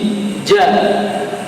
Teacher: Dan nafas pun tidak boleh keluar, suaranya tahan dan nafas tidak boleh keluar, tidak ja, tapi ja, ya, nanti bisa dilatih. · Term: syiddah